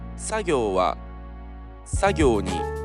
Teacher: The accent kernel is located in first mora of the word.